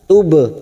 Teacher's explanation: ba sukun qalqalah sugro karena mati asli di tengah kalimat, jangan lupa dipantulkan